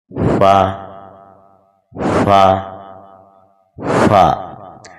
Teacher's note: جب ثنایا علیہ یعنی اوپر والے سامنے کے 2 دانت نیچے والے ہونٹوں کے اندرونی تری والے حصے سے لگتے ہیں تو حرف فا ادا ہوتا ہے۔ فا، فا، فا، یہ بالکل نرمی کے ساتھ پڑھا جانے والا حرف ہے۔